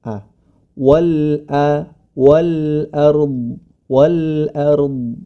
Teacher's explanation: huruf yang hamzah atau alif ini hati-hati juga ikut tebal ya